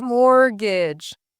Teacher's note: the T in mortgage is silent